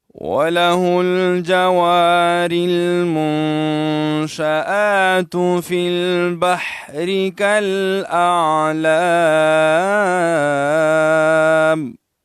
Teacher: ہا کو لام کے ساتھ جو ہے ملائیں، اور جوار میں واو الف وا الف مدہ ہے، را کو لام کے ساتھ ملائیں گے. پھر جو ہے نون ساکن ہے، نون ساکن میں اخفا کیا جاتا ہے، ناک تک آواز لے جائیں گے.